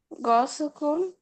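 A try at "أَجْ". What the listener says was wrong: না, এটা গ না, জ, জ। আচ্ছা, আহ আমরা, আমি যেটা বলছি জ। জ।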